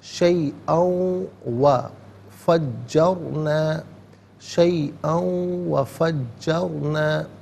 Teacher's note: فجرنا میں را ساکن ما قبل جیم پر زبر ہے، را ساکن کو پر کر کے پڑھا جائے گا